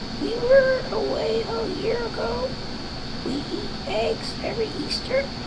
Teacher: when I listen to her voice I hear tremendous strain severe strain